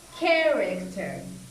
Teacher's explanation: with character, this stress is here, at the beginning of the word.